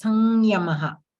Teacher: a little differently sanyamaha okay that there is a nasal sound the yakara is not pronounced just as yakara but a nasal sound is added to it.